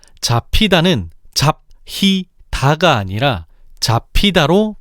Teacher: 잡히다는 잡히다가 아니라 잡히다로 발음하는데 이때 피읍의 정체를 분석해보면 잡의 종성 비읍과 히의 초성 히읗이 만나 축약된 것임을 알 수 있어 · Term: 자음 축약